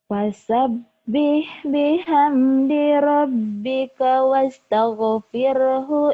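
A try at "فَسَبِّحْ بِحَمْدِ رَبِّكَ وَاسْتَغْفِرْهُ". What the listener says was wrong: jangan buru-buru. Lagunya itunya kayak sedih. Biasa aja. Biasa aja. Biasanya kan kamu tegar nggak melo gitu. Biasa aja. Fasabih bihamdi rabbika wastaghfir.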